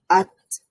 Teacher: আত বলার সময় তা এর সাউন্ডটা আমাদের বন্ধ হয়ে যাবে কিন্তু একটা নরম বাতাস চালু থাকবে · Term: হামস